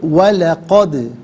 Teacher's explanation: وَلَقَدْ ملا کر پڑھیں گے، وَلَقَدْ، اور یہاں پر دال ساکن ہے لیکن حرف قلقلہ ہے، تو یہاں آواز لوٹتی ہوئی محسوس ہونی چاہیے